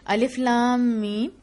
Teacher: الف 1 حرکت اور لام 6 حرکات، اور میم کے ساتھ غنہ کے ساتھ پڑھنا ہے، اور میم کو بھی اسی طرح جس طرح لام کے 6 حرکات تھیں اسی طرح میم کے اوپر بھی 6 حرکات لمبا آپ کو کرنا ہے۔